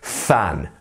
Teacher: the pronunciation differences here so fan you are buddying your teeth the top teeth on the bottom lip on the middle bit so and then you're letting the air through so fan